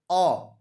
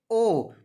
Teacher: ओ के उच्चारण में मुख गोल हो रहा है, इसलिए इसका सही उत्तर होता ओ, वृत्तमुखी स्वर है।